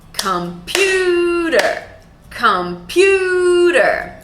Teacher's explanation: We have 3 syllables, computer, and the stressed syllable is the second syllable.